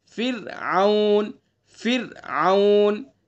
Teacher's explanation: تو زبر پیش ہوگا تو را کو پر پڑھیں گے، اور اگر زیر ہوگا تو را کو باریک پڑھیں گے، جیسے فرعون، دیکھیں را ساکن ہے، اس سے پہلے فا کے نیچے کیا ہے؟ زیر ہے، تو اس لیے اس را کو کیسی پڑھیں گے؟ باریک پڑھیں گے، فرعون، فرعون، پھر اس کو فرعون نہیں پڑھیں گے، اس کو باریک کر کے پڑھیں گے، فرعون۔